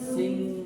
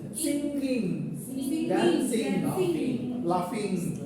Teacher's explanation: See, the air is coming through our nose, nasal cavity.